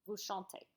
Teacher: No Z sound. It's totally silent.